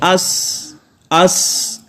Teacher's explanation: اس میں بھی جو ہے وہ آواز جاری رہے گی، یعنی سانس جاری رہے گی اور آواز آہستہ آہستہ پست ہوتے ہوتے ختم ہو جائے گی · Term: صفت ہمس